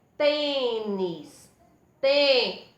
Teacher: tornar a sílaba tônica e deixa o som da vogal mais fechado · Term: acento circunflexo